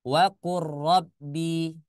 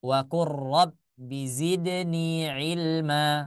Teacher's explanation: tidak dibaca wa qul ro, tapi langsung ke huruf ro.